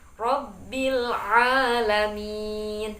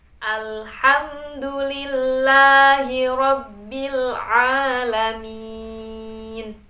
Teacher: Kemudian makharijul hurufnya ain juga harus jelas. Makhrajnya ain terletak pada tenggorokan yang bagian tengah. Jadi harus dibedakan dengan hamzah.